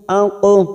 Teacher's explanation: huruf qaf sukun qalqalah sugro yang mati asli di tengah kalimat kita pantulkan